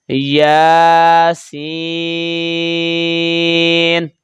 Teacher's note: یا کو 1 الف کے برابر اور سین کو 4 الف کے برابر